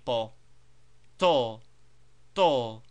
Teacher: as in English but dentally with tip of tongue placed on back of teeth instead of on Front Ridge of roof of mouth